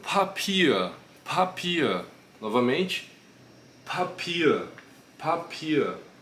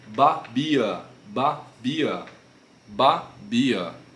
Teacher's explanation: não sai quase nenhum vento da boca quando a gente fala B, B, babia. Papia, por outro lado, ele já tem essa pronúncia mais explosiva.